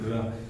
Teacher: तो जब र बोलते हैं ना र, तो इसमें से एक मतलब कंपन आता है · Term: कंपन जात व्यंजन